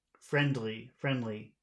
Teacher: that D actually belongs to the second syllable